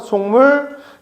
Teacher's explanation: 미음의 영향으로 기억이 이응으로 바뀌었어요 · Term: 비음화